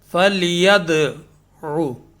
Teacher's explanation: تو فَلْيَدْعُ فا اور لام جو ہے اس میں حرف ساکن کا قاعدہ ہے. ید میں حرف ساکن ہے لیکن یہاں پر قلقلہ ہو رہا ہے، چونکہ دال جو ہے نا وہ قلقلہ کے حروف میں سے ہے